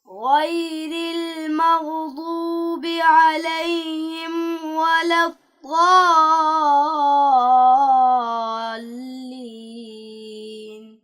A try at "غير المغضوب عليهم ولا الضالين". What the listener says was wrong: بیٹا آپ نے غائن میں قلقلہ کیا ہے اور ضاد کو بھی آپ نے کم موٹا پڑھا ہے، یعنی آپ نے اس کو موٹا پڑھا ہے